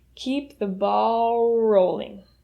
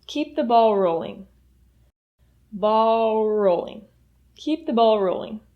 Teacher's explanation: the L at the end of ball and the R at the beginning of rolling will link these 2 words together